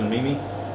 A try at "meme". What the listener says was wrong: It's called meme. It's called meme. It's pronounced meme, not mimi.